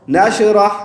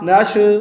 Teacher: अलम नशरह, नशरह, नश नहीं करेंगे, शीन की आवाज़ को खींचेंगे